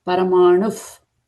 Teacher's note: visarga is followed by pa sound, pa sound, right? As per our rule, it changes to f sound.